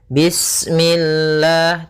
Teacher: Kemudian lafal Allah ketika sebelumnya kasrah maka dia dibaca dengan tipis ya dengan L.